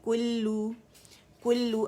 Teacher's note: باریک لام باریک جماؤ دیں گے لام کے مشدد پہ اور کمپلیٹ رولنگ کریں گے, ایک رولنگ سے دونوں ادا ہو جائیں گے, ٹھیک ہے.